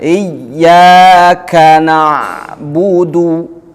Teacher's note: ini huruf yang huruf ya bertasjid. Jadi kita harus menekannya.